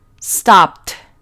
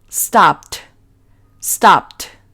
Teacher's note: Entonces, al transformar este verbo en su pasado, según la regla número 1, vamos a pronunciar esa ed en el pasado como una T y sería stopped.